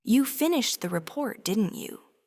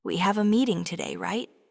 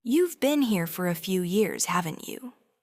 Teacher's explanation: Notice how the voice goes up slightly at the end. That's the sound of a confident speaker checking in with the listener.